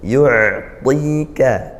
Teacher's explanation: yu'ain sukun, alirkan dia suaranya, yu'tika. Jadi ini pakai to ya, ditebalkan, tika, jangan tika, yu'tika.